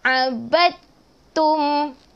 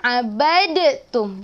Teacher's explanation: Huruf dal kita terus masuk huruf ta. Kita terus masuk ke huruf yang ta, yang ada tanda syaddah. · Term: idgham mutajanisain